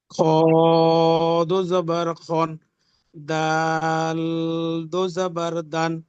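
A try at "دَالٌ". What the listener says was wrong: দাল বলে শেষে যে জিহ্বাটি উপরে চেপে ধরছেন, দাল, ঠিক এমন চেপে ধরা হবে না, দাল।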